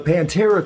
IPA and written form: pænˈtɛrə (Pantera)